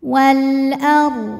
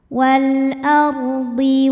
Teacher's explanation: Ra sukun didahului fathah, dibacanya secara tafkhim, tebal ya.